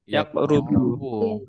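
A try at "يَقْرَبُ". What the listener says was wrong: Jangan yakrubu karena di Al-Qur'an wala takrobuz zina seperti itu. Berarti koruba koroba yakrobu seperti itu ya. Tapi di Al-Qur'an itu yakrobu ya. Wala takrobuz zina tadi itu. Takrobu. Walau baca yukoribu ya nggak apa-apa, tapi nanti di sini bedanya darsahu. Kalau dibaca yakrobu, darsuhu jadi fa'ilnya.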